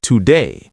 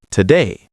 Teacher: A teacher might say today with full vowels. A native speaker in conversation says today and learners don't connect the two versions.